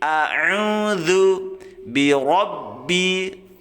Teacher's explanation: ro-nya tafkhim ya, karena berharokat fathah, dibaca tebal ro. Ro seperti kita mengucapkan huruf o ya.